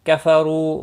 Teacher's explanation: کفرو رو پیش کی وجہ سے پر پڑا جائے گا، رو و مدہ بھی ہے ایک الف کے برابر کھینچ کر پڑھیں گے۔